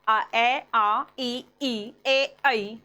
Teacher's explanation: तो इनमें हमारे होठ जो है वो फैल रहे हैं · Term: अवृत्ताकार